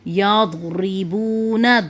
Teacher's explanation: دود کی آواز موٹی اور نرم ہوتی ہے اور جماؤ والی ہوتی ہے، یضربون۔ دود پڑھتے ہیں اس کو پڑھتے ہیں دود، یضربون، لیکن ہمارے یہاں پر اس کو زود پڑھا جاتا ہے تو پڑھتے ہیں یضربون، اس طرح کر کے۔